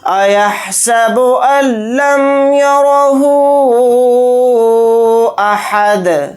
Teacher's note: ہا کے اوپر الٹا پیش ہے، الٹا پیش بھی حروف مدہ کا قائم مقام ہوتا ہے، یعنی حروف مدہ کے بعد حمزہ دوسرے کلیمے میں آ رہا ہے الف کی شکل میں، تو اس میں مد منفصل کا قاعدہ ہو رہا ہے، یعنی جو اوپر مد ہے اس کو 3 الف کی مقدار ہا الٹا پیش ہو کے ساتھ کھینچ کر پڑھیں گے۔ حمزہ کو جلدی پڑھیں گے، ہا کو جلدی پڑھیں گے، دال کے اوپر 2 زبر 2 پیش ہیں تو 2 پیش نہیں پڑھے جائیں گے، حالت وقف میں دال کو ساکن بنا کر پڑھیں گے۔